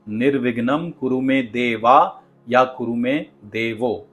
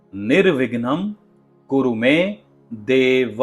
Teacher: हमें खास ध्यान रखना है कि देव का देवा ना हो। देव का देवो ना हो।